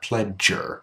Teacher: the affricate sound has that stop so there's that aspiration that explosion of air